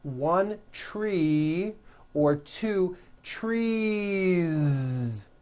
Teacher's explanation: it's trees with that voiced ending